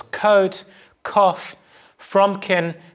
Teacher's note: Going even further back in the oral tract, we get to velar place. So here the back of the tongue will raise to press up against the velum and stopping airflow there. That occurs in the sound k.